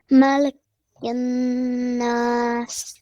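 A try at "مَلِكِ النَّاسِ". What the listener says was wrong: Okay, yes, you are most part is correct, but there is one problem with the lam. It is Mali, not Malay or whatever you're reading. It's Mali. Try to read Mali.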